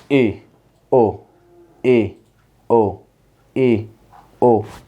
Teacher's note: हमारा मुख आधा बंद होता है, आधा खुला सा रहता है। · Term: अर्ध संवृत स्वर